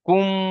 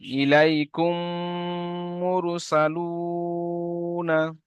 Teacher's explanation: মিম সাকিনের পরে মিম আছে, তাই মিমকে মিমের সাথে মিলিয়ে এক আলিফ পরিমাণ গুণনা করে পড়তে হবে, একে ঈদগমে সাফাবি বলা হয়।